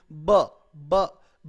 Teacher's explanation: और बात करने के लिए मेरे दो ब ब बा में मुझे ये मेरे दोनों होंठ मिले हैं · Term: बायलेबियल